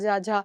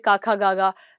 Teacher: तालव्य से हम बोलते हैं च और कंठ से बोलते हैं क ख ग